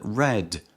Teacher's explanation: The word red begins with a postalveolar consonant, produced with the tongue approaching the area just behind the alveolar ridge